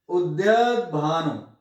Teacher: उद्यत य में अ जो है थोड़ा लंबा खींचना पड़ेगा, क्यों, द आगे आधा है, तो आगे आधा अक्षर होने के कारण ये द्य में जो य अ है ना, अ ये भी दीर्घ हो जाता है, गुरु हो जाता है। · कहीं भी आधा अक्षर आ जाए, आधे अक्षर के से पहले वाला जो छोटा स्वर भी है वो भी गुरु हो जाता है, दीर्घ हो जाता है